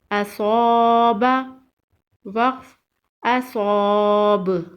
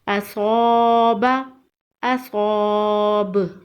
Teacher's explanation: وقف کی صورت میں با پر قلقلہ ہوگا